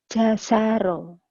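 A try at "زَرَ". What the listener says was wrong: Jangan jasaro ya, Bu. Za. Iya, ini keras, ini rapuh. J juga, tapi J-nya ini Z. Jazaro.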